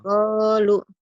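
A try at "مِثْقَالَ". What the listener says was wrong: miskola bukan miskolu. Miskola.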